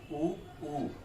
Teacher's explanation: जीवा का अग्रभाग यहाँ पर भी अधिक प्रभावी सक्रिय नहीं हो रहा है, अपितु पृष्ठ भाग से इसकी आवाज आ रही है।